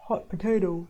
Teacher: That kind of a mouth shape you want to have, up and down, and your mouth is like an O shape. So your tongue is low and is held quite far back, and your lip rounding is encouraged